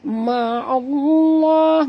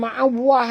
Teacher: Ma'allah, dan lam di tengah-tengah. Lam pada lafaz jalalah dibaca tebal kerana ain berbaris di atas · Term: Lam yang tebal